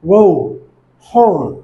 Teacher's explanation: জিহ্বাটি mid central থেকে high ব্যাকে যাবে আর ঠোঁটটি গোলাকার হবে।